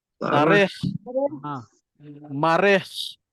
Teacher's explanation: Pastikan bunyi dia tebal lah. Bunyi dia ada bunyi nak keluar kahak tu. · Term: huruf kha